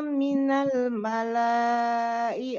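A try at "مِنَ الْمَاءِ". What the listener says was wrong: Bukan malah, minal ma'i.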